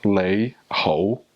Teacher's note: so you have a low rising and a mid rising